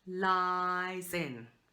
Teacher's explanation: the S is just really almost on the in